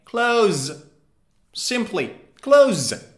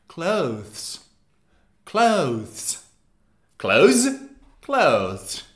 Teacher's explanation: british people say the th very slightly